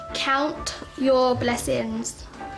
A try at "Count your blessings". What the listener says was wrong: Blessings. You have lost the T. Go back to the word count.